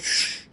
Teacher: 쉬와 zu는 혀의 중간 부분을 입천장 쪽으로 가까이 대고 혀 중간 부분과 입천장 사이에 통로를 만드는 것입니다. 공기인 숨이 지나갈 통로죠. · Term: 무성음 쉬